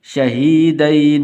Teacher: یہ یا حرف لین میں سے ہے تو اس لیے اس کو لمبا نہیں کریں گے.